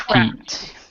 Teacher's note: Okay, and how you one of the and it's also aspirated. Both the T and the P are aspirated.